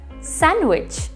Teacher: read it without a d and pronounce it as sandwich without a d